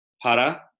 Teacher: Spanish single R is a tap. But yes, R in Sanskrit is always tapped as in Spanish. So the simple word para, which we have in both Spanish and Sanskrit.